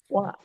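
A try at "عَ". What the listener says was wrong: Wa'a. di tempat-tempat tertentu di mana dirimu suka membaca fathahnya itu ketahan rahangnya. jadi A dengan A. Sama aja. A sama A harus sama buka. Sama. Harus. Sama. Ya kan tempat keluarnya yang berbeda.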